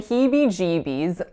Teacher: And I know it's very, very, very acoustically similar, but think of the E as a glided vowel. So it's like a E going into more of like a Y sound. So if that's not real easy for you to hear, then listen to me saying Heebie Jeebies at a slower rate, and you'll notice really quickly that it is not a pure vowel sound.